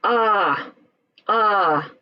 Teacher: vowels all right now we go to the long vowels and this is where it takes a little longer to say the vowels we kind of stretch out that sound a bit